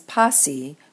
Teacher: the consonants get squished and the alpha lengthens and the word appears as πᾶσι(ν)